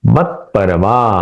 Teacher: यहां पे आधा जो त है वह वैसे ही रहेगा उसमें बदलाव नहीं है। वह प के साथ मिल जाएगा।